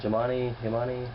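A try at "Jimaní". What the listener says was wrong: Well, it's Imani. It's J-I-M-A-N-I. J is silent in Spanish, and it's in the Dominican Republic. But the Haitians, being French, pronounce it Jimani. but technically, it's a little town called Imani, Dominican Republic, just inside the Dominican border over the line from Haiti.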